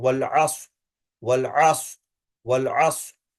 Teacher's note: را is to be retained, صاد is to be retained, both are to be retained، لیکن کھینچنا کسی کو نہیں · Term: کھینچنا نہیں ہے